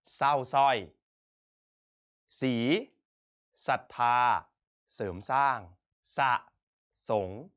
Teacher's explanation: เราจะไม่อ่านออกเสียงรอเรือแต่จะออกเสียงเฉพาะพยัญชนะตัวหน้าเพียงตัวเดียว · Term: ควบไม่แท้